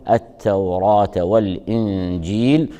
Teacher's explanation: والجيم من حروف الإخفاء تخفى عنده النون الساكنة مع مراعاة الغنة. والياء مدية جاءت قبل الحرف المتطرف من الكلمة، فإن وقف على الكلمة فيكون المد فيها مد عارض للسكون يصح فيه المد حركتان أو 4 أو 6 حركات، وإن وصلت بما بعدها فالمد فيها مدا طبيعيا بمقدار حركتين.